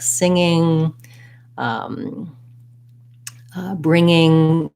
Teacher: when there's two ngs i'll often hear people make the error of having a little g sound in there like long ging and you don't want that in this word